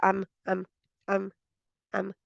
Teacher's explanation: मीम में गुन्ना पूरा करके ठहरना है, मीम नहीं कह देना जल्दी से।